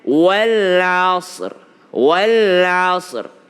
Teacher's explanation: Ra adalah huruf tebal, sad bukan qalqalah.